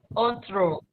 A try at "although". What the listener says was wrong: Okay, it's pronounced like this. All though. All. It's not al. It's all. Pronounces all. And though pronounced like this. Though. Although.